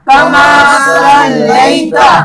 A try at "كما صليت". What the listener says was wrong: كما صليت صليت نہیں سین کے ساتھ نہیں ہے، سواد کے ساتھ ہے، صليت